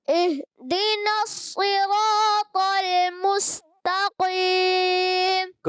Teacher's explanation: مستقیم میں آپ نے تھوڑا سا سین کو باریک رکھنا ہے، پر نہ ہو